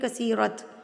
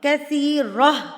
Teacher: یہاں پر آپ نے رکنا ہوتا ہے اور جب آپ نے اس گول تا پہ وقف کرنا ہے، یعنی وقف کہتے ہیں سٹاپ کرنے کو، رکنے کو. تو جب آپ نے اس گول تا پہ وقف کرنا ہے تو یہ گول تا کیا بن جائے گی؟ گول ہاں میں تبدیل ہو جائے گی. تو آپ اس کو پڑھیں گے کثیرہ.